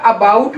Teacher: ये हमारी open position है, ये हाफ ओपन है, हाफ ओपन, तो इन दोनों के बीच में है, तो it is central अनराउंडेड vowel between half open and open position